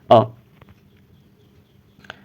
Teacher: मध्य स्वर यानी कि जिस स्वर का उच्चारण करते हुए हमारी जो जिह्वा है, हमारी जो जीभ है वो मध्य भाग में रहती है